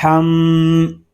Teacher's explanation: اس کو ہم نہیں پڑھیں گے بلکہ میم شدد ہے تو اس کو غننے کے ساتھ ہی پڑھیں گے